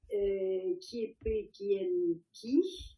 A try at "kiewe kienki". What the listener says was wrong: Alors, kiewe kienki, c'est mieux. Parce que tu as dit kiepe, et c'est un wa ici.